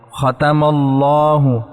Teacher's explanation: میم پہ زبر آ گئی ہے، اس لیے ہم اللہ کا لام موٹا کریں گے